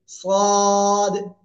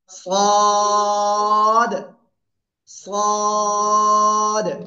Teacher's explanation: মোটা আওয়াজে পড়তে হবে, সদ। জিহ্বার আগা, সামনে নিচে দুই দাঁতের পেট ও আগার সাথে লাগাবো, লাগিয়ে একটু মোটা আওয়াজে উচ্চারণ করবো